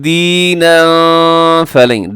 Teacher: دینا یہاں پہ اخفا ہے، تنوین کے بعد فا ہے جو فا حرف اخفا میں ہے